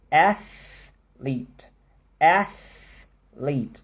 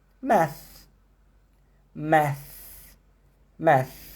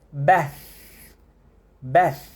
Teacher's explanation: Então, todos esses são exemplos do TH voiceless. É um som que você coloca a língua entre os dentes e sopra